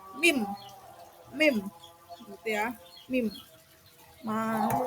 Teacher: Cara pengucapannya tempelkan bibir bawah dan bibir atas, menutupnya dengan sempurna, lalu menahannya dengan udara di belakang kedua bibir tersebut. Merendahkan di langit lunak, maka akan keluar udara di rongga hidung.